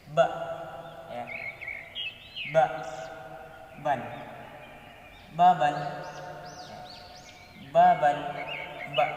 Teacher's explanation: Ba ini keluar dari dua bibir atau bisa kita sebut dengan bisyafatain, ya. 2 bibir.